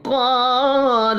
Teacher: قاف حروف مستعلیہ ہے، پر پڑھا جائے گا